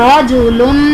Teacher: यहाँ पर रॉ पर ज़बर है तो हम रॉ को पुर यानी मोटा पढ़ेंगे।